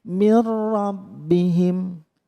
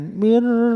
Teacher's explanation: nun sukun bertemu ro namanya idghom bilaghunnah maka tidak boleh mendengung di situ mirrobbihim jangan mirr jangan lama-lama ya kenapa di mirrobbihim berhenti karena